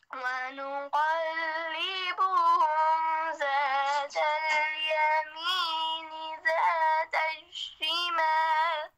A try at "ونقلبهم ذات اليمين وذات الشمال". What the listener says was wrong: आपसे वाव मिस होगी, वज़ात الشمال। ونقلبهم ذات اليمين وذات الشمال